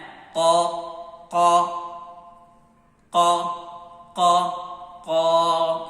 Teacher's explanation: قاف کی آواز جو ہے وہ ہماری حلق کے پہلے حصے سے ادا ہوگی۔ ہماری حلق کا پہلا حصہ جو زبان کی جڑ ہے اس کے قریب ہے، وہاں سے اس کی آواز کو ادا کرنا ہے۔